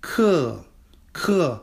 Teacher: and they're falling tones this is the fourth tone